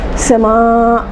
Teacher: یہ آپ لوگ سب پڑھیں گے. حمزہ آنے کی وجہ سے یہاں پر مد متصل ہوگا، 6 کا مد